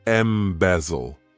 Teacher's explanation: To embezzle, this verb has 3 syllables, and the stress is on that second syllable